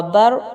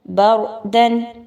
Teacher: اس با پر زبر کی وجہ سے آپ اس را کو پر پڑھیں گے